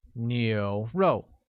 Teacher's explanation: with a mid-rising tone on U, a falling tone on O